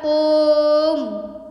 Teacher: जो प्लुत स्वर होता है इसको बोलने में, इसके उच्चारण में हर्ष स्वर दीर्घ स्वर से भी ज़्यादा टाइम लगता है, यानी कि हर्ष स्वर को बोलने में इससे 2 गुना टाइम लगता है, और जो प्लुत स्वर होता है उसको बोलने में 3 टाइम लगता है, 3 गुना ज़्यादा टाइम लगता है